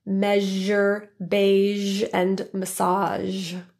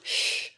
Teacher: the sound is produced very similar to the sh sound sh only there's a voicing or vibration to the vocal folds